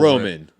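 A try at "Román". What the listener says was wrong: No, you got to put the accent mark over there. Roman.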